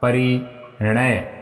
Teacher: अब देखिए यहाँ पर न शुरू में था, यहाँ पर शुरू में था, अब यहाँ पर शुरू में नहीं है, एक वर्ण इसके पहले है, फिर भी न किस में बदलेगा विद्यार्थियों? र के प्रभाव से न बदलेगा ण में